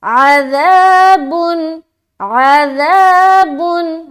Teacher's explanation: जब ज़ा बोलेंगे ना सीटी की आवाज़ नहीं आनी चाहिए